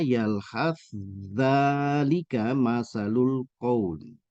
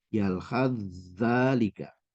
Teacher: Sa-nya di sini tidak dibaca ya, dileburkan saja.